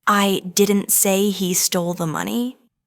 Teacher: the stress is on didn't, meaning maybe someone else said it.